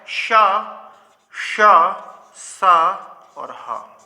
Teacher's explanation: इनका उच्चारण रगड़ से होता है, अर्थात घर्षण से होता है, जिस कारण इनके उच्चारण में वायु गर्म हो जाती है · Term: ऊष्म व्यंजन